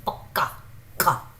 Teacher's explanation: So the stress is not on throwing out the air, but more tense, like it's like K. You tense your throat and you pronounce it as like K, pakka, ka. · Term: tense one